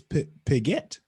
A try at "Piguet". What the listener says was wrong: It's Piguet. It's like you're saying Piguet, like you're emphasizing the get part. You gotta like let the Piguet. enunciating.